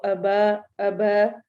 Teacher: حمزہ کو لمبا نہیں ہونے دینا اور با کو لمبا کرنا ہے